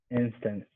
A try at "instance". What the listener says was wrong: I'm not really hearing the S sound at the end. Try to say it a little stronger. Instance. And here we're emphasizing the first syllable. Instance.